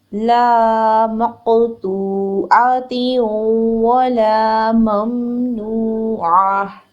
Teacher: تا کے نیچے زیر تنوین ہے اور نیکسٹ ورڈ ہے واو مشدد. دونوں ورڈز کو آپس میں مرج کریں گے اور غنہ ادا کریں گے · واو کی 1 حرکت ہے. لام زبر الف لا 2 حرکت لمبا کریں گے. میم زبر میم ساکن مم، میم کے اوپر زبر ہے، 1 حرکت پڑھیں گے فوراً میم ساکن کے ساتھ ملا کر. · وقف کی صورت میں گول تا کو ہا ساکنہ میں چینج کر کے پڑھیں گے